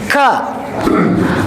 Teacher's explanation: kalau kaf dia nempel pada perbatasan antara bagian atas lunak dan keras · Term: huruf kaf